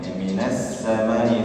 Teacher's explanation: Kasayyibin minas samai, minas samai, sin tasydid ya, sin tasydid ada sifat desisnya ya, sifat shafir ya, minas samai ya, minas samai, kemudian ada mad wajib muttasil dalam kata as-samai ya, as-samai satu kata.